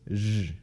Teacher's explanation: post-alveolar fricative voiced. Basically, it's like the sh, but it's voiced. So it's zh.